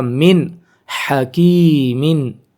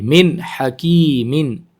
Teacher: ظاہر تو کریں گے نون کو لیکن غنہ نہیں کریں گے، ناک میں آواز نہیں رکھیں گے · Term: اظہار